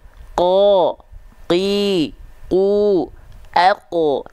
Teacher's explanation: karena pangkal lidah kita naik ke arah langit-langit, dengan otomatis ketika qaf berharokat fathah, vokal A-nya pasti akan jadi O. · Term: isti'la